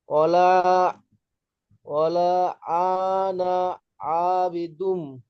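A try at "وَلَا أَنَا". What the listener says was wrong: না, আপনি হারাকাতকে কেন টান দিচ্ছেন? হামজা যাবার হারাকাত, আর নুন আলিফ যাবার না, আলিফ মাদ্দা।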